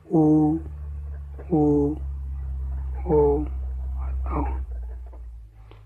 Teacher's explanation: जिसके ओठ गोलाकार हो जाते हैं, वृत्त के आकार का हो जाते हैं जिन स्वरों को बोलने पर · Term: व्रतमुखी